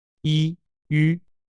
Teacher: 舌头不动，嘴巴变圆